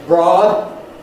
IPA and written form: brɒːd (broad)